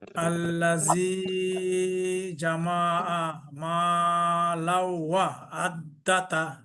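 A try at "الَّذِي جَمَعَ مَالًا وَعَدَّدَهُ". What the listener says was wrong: একটু গুণা বেশি হবে, টানও একটু কম কম হয়ে যাচ্ছে আমার।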